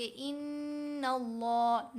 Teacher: नून के ऊपर ज़बर, लाम मोटी पढ़ी जाएगी